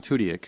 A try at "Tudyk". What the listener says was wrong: Tudyk. Tudyk. There's a whole syllable you put in there.